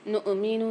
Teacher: حمزہ کے اوپر جزم آ رہا ہے، سکون آ رہا ہے، تو یہاں ہم نون کے ساتھ جھٹکا دے کے پڑھیں گے